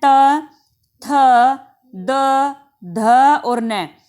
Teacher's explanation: त वर्ग का कोई भी एक वर्ण ऐसा नहीं है जिसमें आप दांत को जीभ को बिना छुए बोल सकें। यानी कि त आप बिना जीभ दांत के लगाए बोल ही नहीं सकते।